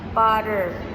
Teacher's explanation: other might pronounce butter like it sounded like D instead of T